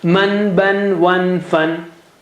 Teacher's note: noon in all the cases is from the tongue tip